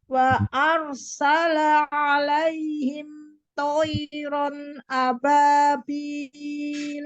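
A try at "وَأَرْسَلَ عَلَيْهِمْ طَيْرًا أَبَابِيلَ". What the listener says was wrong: La jangan terpisah dari ain, ngalir nyambung ke a.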